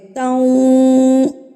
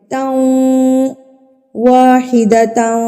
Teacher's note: ناک پہ آواز بھی جائے گی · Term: غنہ